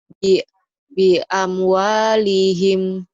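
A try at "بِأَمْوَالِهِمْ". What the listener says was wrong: Pendek. Amnya panjang. Bi amwalihim. Ayo.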